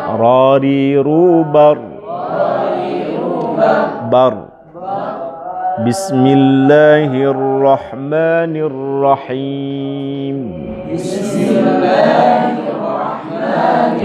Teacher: Satu kali getaran halus ujung lidah. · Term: takrir